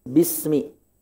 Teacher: Kemudian Ar-Rahman, ro-nya fathah tebal.